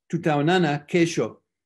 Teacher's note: you can tell it's one word because you stress the next to the last syllable